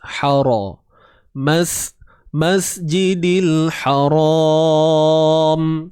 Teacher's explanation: Huruf ha baris atas, ha pedas kemudian ra tebal juga.